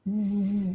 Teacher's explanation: Z is voiced, as in zit. Z, as you touch your throat, you'll feel the vibration when you say z